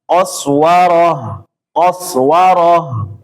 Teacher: Ha di akhir dialirkan jangan stop ya.